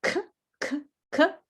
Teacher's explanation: Socks, the final sound, K, K, K, no vibrate.